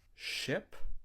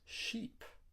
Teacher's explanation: With the word ship, your mouth is closed. And with the word sheep, your mouth is stretched.